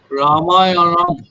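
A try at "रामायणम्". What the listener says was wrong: রা মা দুটোই এক্সটেন্ডেড হবে। রামায়ণম, রামায়ণম। এর মধ্যে আমাদের নিয়মগুলো আসছে, দুটো আকার পাচ্ছি, ওটা দীর্ঘ উচ্চারণ হবে। তারপরে দুটো অকার পাচ্ছি, ছোট্ট করে উচ্চারণ হওয়ার কথা, কিন্তু পরেরটাতে মূর্ধন্য আর ময় হসন্ত এবং অনুস্বার হচ্ছে প্রায় একই, সমগোত্রীয়।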